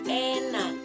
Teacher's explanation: berada di depan, nada tengah, dan bentuk mulut tak bundar.